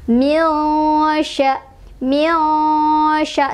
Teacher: Cara bacanya sama dengan yang sebelumnya, yaitu disamarkan sambil berdengung. Jadi nunnya samar, tidak terlalu jelas, jangan juga dimasukkan, jangan juga diidgomkan. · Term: ikhfa ausath